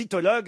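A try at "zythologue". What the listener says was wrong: Ah, mais il n'y a pas le Z,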